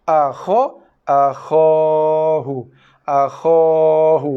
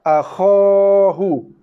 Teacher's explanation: Bukannya kha yang panjang, tapi kha tu kekal tetap dibaca 1 harakat. Yang panjang adalah bunyi alif jauh. Alif rongga mulut.